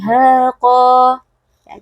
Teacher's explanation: yang samar dan juga dipanjangkan khaqo ya jadi dengungnya bersifat samar Bagaimana cara kita menyamarkan dengung dengan tidak menyentuhkan ujung lidah kita ke makhraj huruf nun jadi lidahnya kita gantung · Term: ikhfa Hakiki